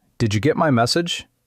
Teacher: The word get is often light. The important word might be message.